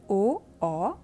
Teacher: स्वर ओ, औ और आगत स्वर आ। इन वर्णों का उच्चारण कंठ और ओष्ठ की मदद से किया जाता है, अतः इनका उच्चारण स्थान कंठोष्ठ है।